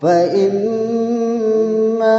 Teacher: mim bertasdid itu disebut dengan gunnah. Dibaca kadar panjang itu 2 sampai 3 harokat.